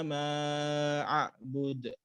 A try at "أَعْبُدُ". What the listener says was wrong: أعبد. ما انتبه للهمزة تختلط أحيانا معك بالعين. أعبد.